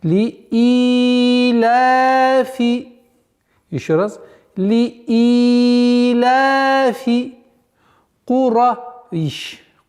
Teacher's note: Вот в данный момент вот это естественное удлинение в размере 2 огласовок. Вот удлинение кесры и удлинение фатхи в размере 2 огласовок, они должны быть одинаковыми в долготе